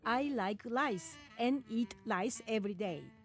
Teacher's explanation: we say rice as lice and right as light